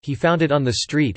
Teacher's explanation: the rising pitch on street indicates that the question hinges on that word, on where he found it, not whether he found it.